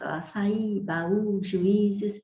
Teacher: O hiato você já viu, né, no início desta aula, que é quando você tem duas vogais que se escrevem juntas na palavra, mas são pronunciadas em sílabas diferentes